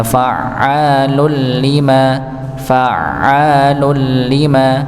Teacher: tanwin bertemu dengan lam maka dibaca idgham bila ghunah maka langsung masuk ke lamnya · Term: idgham bila gunnah